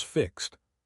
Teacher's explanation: The x is actually a k's sound. Unvoiced.